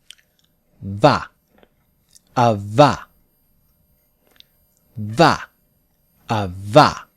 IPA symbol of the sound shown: v